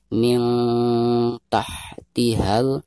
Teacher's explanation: Min, nun sukun berhadapan dengan salah satu huruf ikhfa, yaitu huruf ta di sini ya, maka cara membaca nun sukunnya itu harus disamarkan disertai dengan dengung.